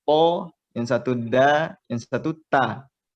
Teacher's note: Misalnya huruf ada 3 huruf yang sama tempat keluarnya, seperti huruf to, huruf dal, dan huruf ta. Tiga-tiganya sama dari ujung lidah bertemu dengan belakang gigi seri bagian atas atau pangkal gigi seri bagian atas.